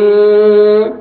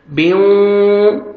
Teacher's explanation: نوز میں ساؤنڈ لے کے جائیں گے، غنہ کے ساتھ ادغام ہوئے گا